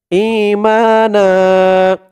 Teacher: এক জবর দিয়ে এক আলিফ টান দিয়ে পড়া হয়েছে